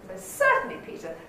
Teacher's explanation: the first syllable of certainly is going to be the nucleus